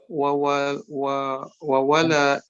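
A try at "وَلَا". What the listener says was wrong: wa-nya satu ya, wala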